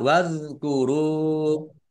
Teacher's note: Wadhkuru zal sukun bukan kolkolah, jangan dipantulkan.